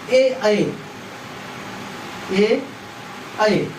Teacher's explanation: ए का उच्चारण स्थान होता है कंठ और तालु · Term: कंठ तालु